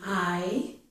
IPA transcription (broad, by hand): ɑɪ